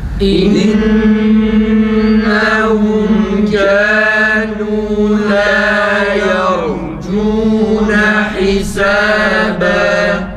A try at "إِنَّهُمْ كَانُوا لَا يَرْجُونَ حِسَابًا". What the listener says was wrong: Tekrar yalnız çok inceltmeyelim. Hisaba.